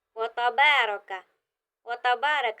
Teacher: یہاں پر جو را ہے اس کے اوپر زبر ہے تو یہ را موٹی پڑھی جائے گی۔ وتبارک، وتبارک را کے اوپر زبر آئے اور را کے اوپر کوئی بھی حرکت ہو، زبر یا دو زبر، کھڑی زبر، پیش یا الٹا پیش، تو را موٹی پڑھیں گے۔